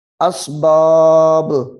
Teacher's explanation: یہاں پہ با کو ظاہر کر دینا ہے، ساکن کرنا ہے تو با حروف قلقلہ بن جائے گی، اور حروف قلقلہ جہاں ساکن ہو وہاں خوب ظاہر ہوتا ہے.